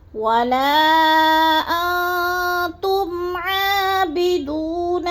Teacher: نون ساکن کے بعد حرف تا آ گیا ہے تو ادھر اخفا کریں گے، آواز کو ناک میں چھپا کر پڑھیں گے